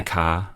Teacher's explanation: In New Zealand English, we don't make R on the ends of words. We say AH. We do.